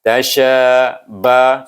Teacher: Suku kata ta bunyinya ta, suku kata shin bunyinya sya, tetapi dia bertemu dengan alif di sana. Maka kita baca shin itu, sya itu, suku kata sya itu dengan dua harakah panjang.